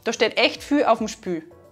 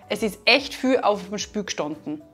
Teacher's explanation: In unserem Beispiel verändert sich die Kombination Doppelvokal IE und L zu einem Ü. Das nennen wir auch L-Vokalisierung, weil das L eben nicht mehr ausgesprochen wird, sondern stattdessen ein Vokal gesprochen wird.